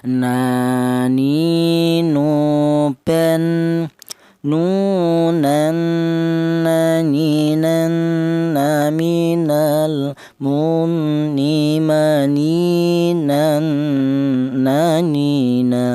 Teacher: Huruf nun berasal dari ujung lidah menyentuh langit-langit mulut.